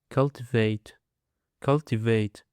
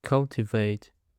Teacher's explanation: Now, let's go to the last word, which is cultivate cultivate It is a three syllables and the stress is on the first syllable.